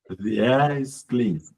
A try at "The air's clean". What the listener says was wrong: Still sounds the same. Like you're trying to think the air is. You're still thinking of is. There's no is here. It's just airs. The air's clean. I want you to do it with a stop like that.